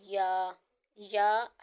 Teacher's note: یا حروف شجریہ میں سے ہے، زبان کے درمیان اور تالو کے درمیان سے ادا ہوگا